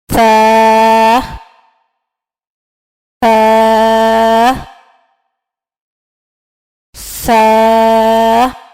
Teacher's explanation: زبان کی نوک جب سامنے کے دانتوں کے سرے سے لگے تو سا ادا ہوتا ہے. سا کو ہم نرمی سے ادا کریں گے.